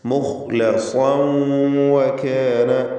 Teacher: ഇദ്ഗാം ബിഗുന്ന നാഖിസ്, തൻവീനിനെ വാവിലേക്ക് ലയിപ്പിച്ച് മണിച്ചുച്ചരിക്കുക